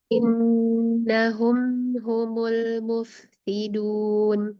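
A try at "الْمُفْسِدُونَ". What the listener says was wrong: Innahum itu bagus. Yang fa-nya juga udah bagus, tarik bibirnya. Tapi satu kurang dikit. Rokhwahnya, huruf fa. Alirkan lagi. Al-mufsiduna.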